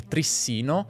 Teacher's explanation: la pronuncia “trissìno”, con l’accento sulla penultima sillaba, è naturale